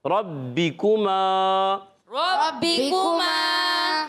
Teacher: ربکما میں را پر زبر آنے کی وجہ سے را پر ہو جائے گا، پر پڑھیں گے ربکما، با مشدد ہے، ذرا رک کر ادا کریں گے، را پر زبر ہے، با کے نیچے زیر ہے، کاف پر پیش ہے، حرکات کو نہیں کھینچیں گے۔ · کاف کا مخرج زبان کی جڑ تالو کا سخت حصہ